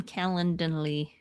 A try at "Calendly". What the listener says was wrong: Calendly. you're adding in another syllable.